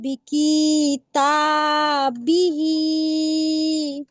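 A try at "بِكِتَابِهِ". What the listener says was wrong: আপু বি কি, কি টান হয়ে যাচ্ছে, টান হবে না, হারাকাত তাড়াতাড়ি করতে হবে।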